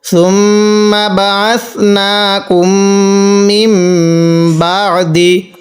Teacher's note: এই মিমের মধ্যে গুণনা করছি মিম সাকিনের পরে বা থাকার কারণে